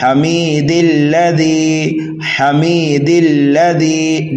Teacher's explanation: direct دال کو لام مشدد میں ملا دیں گے